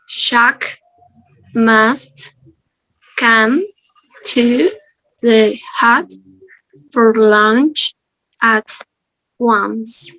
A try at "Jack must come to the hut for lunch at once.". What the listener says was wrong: That was slightly better, but when I see you pronouncing it, you're still opening your mouth too much. Yeah, keep it relaxed.